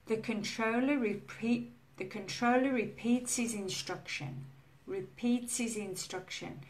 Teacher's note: if you say this sentence quite quickly, the word his, you will notice that the H sound disappears. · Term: sounds disappearing